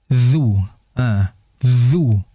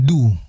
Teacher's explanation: Kalau du itu dia di dalam gigi seri ya, bagian atas